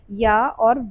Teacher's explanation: उच्चारण अवयवों में कहीं भी पूर्ण स्पर्श नहीं होता तथा स्वास वायु अनवरोधित रहती है। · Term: अर्ध स्वर